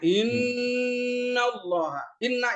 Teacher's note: Nun dan mim yang atau namanya miman eh waunan ya musyadadatan Nun dan mim yang bertasdid itu pakai dengung